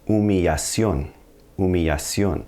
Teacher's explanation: We actually picked up the double L, and because a double L in Spanish is going to sound like a Y or a J, we're going to have to pronounce it that way.